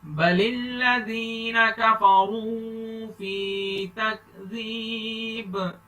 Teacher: فی پر تھوڑا سا لمبا کریں گے, جائے مدہ ہے, ایک الف کے برابر لمبا کرنا ہے.